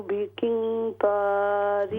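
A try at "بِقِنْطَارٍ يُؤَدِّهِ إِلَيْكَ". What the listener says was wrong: बिकिन कॉफ को मोटा कीजिए, बिकिंतारी, यहाँ पर गुन्ना कीजिए, बिकिंतारी युअद्दिही इलैक, ये या के साथ ये जो इदगाम हो रहा है दो ज़ेर का, तो यहाँ पर भी गुन्ना होगा। इसको इदगाम माल गुन्ना कहते हैं, गुन्ने के साथ इदगाम होगा। बिकिंतारी युअद्दिही इलैक,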